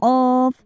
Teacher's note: जब इसको आप कौफ को अदा करोगे तो बच्चों आप खुद देखोगे आपका कौवा जो है व थोड़ा सा हरकत करेगा